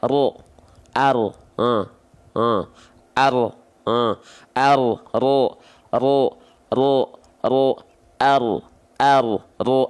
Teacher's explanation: Yang nempel itu bukan ujung lidah kita, tapi melainkan punggung lidah kita. Maka bentuk ujungnya itu seperti V. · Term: huruf ro